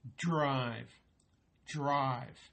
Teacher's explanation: your tongue is dragging across the ridge behind your front teeth